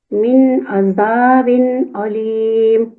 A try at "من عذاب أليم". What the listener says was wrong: علیم الف پہ عین کا وہ مخرج نہ ہے. عذاب علیم. تو جب عین اور الف اتنا کلوزلی آ رہا ہے تو پھر زبان تھوڑا ادھر ادھر کا مخرج لے لیتا ہے، لیکن کوشش کرنا ہے کہ نہ لے، ٹھیک ہے؟